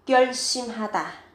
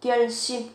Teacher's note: cần chú ý về cách phát âm, gấp đôi phụ âm sờ lên ở cái âm tiết thứ hai.